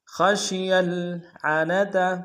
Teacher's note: خا کو موٹا ادا کریں گے، شین کو واضح کریں گے، یا کو آگے لام کے سامنے لانا ہے، لام سکون نہیں ہوگا.